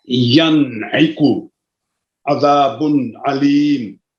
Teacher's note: نون ساکن کو اپنے مخرج سے بغیر غنہ زمانی کے ظاہر کرنا. مثلا ینعقو عذاب علیم، اس کو اظہار حلقی کہتے ہیں.